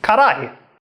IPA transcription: kaɾai